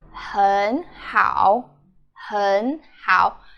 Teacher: We change the first word to second tone.